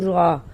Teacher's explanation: زبان میں ہلکی سی حرکت بھی ہوگی، تکرار بھی ہوگا اور را صحیح بھی ادا ہوگی